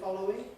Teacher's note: I've dropped out that middle syllable and gone straight from the L to the W.